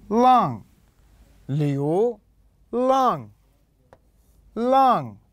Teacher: النغمة الرابعة يكون نازل إلى الأسفل